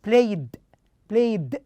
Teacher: the last sound is voiced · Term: d sound